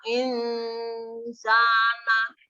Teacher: karena ada huruf nun sukun bertemu dengan huruf sin. Nah, jadi membacanya samar. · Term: bacaan ikhfa